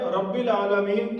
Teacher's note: اس کے بعد ہے رب العالمین کی را۔ یاد رکھیے، را ایک ایسا حرف ہے کہ وہ موٹا ادا ہوتا ہے، اس اردو میں کہتے ہیں، عربی میں کہتے ہیں تفخیم کے ساتھ۔